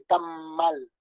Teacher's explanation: Al momento de soltar la A ya está articulando la M